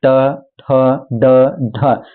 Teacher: मूर्धन्य मतलब ट बोलेंगे ट तो दांत और तालु के बीच में जो होता है वहां आपका जो जीभ है वो टच होता है